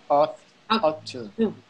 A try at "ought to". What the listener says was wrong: Okay, that's how it looks, but it's actually pronounced oughta. Oughta.